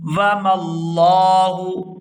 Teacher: لفظ اللہ کے لام کو پورا ادا کریں گے اور کھینچ کر ادا کریں گے